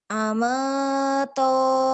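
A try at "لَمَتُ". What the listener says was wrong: Bukan alif tapi lam ya.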